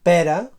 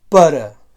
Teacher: en català balear una vocal neutra tònica